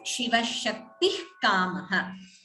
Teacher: Visarga followed by Ka would be Jihvamuliya. So we do not pronounce the Visarga completely.